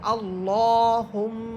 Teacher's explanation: আল্লাহ শব্দের পূর্বে জবর হওয়ার কারণে এখানে আমরা আল্লাহ শব্দটাকে মোটা করে পড়তেছি